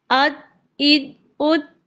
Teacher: जबान के बीच वाले हिस्से को ऊपर के तालु से बिल्कुल चिपकाते हैं पहले, तब ही जीम निकलता है।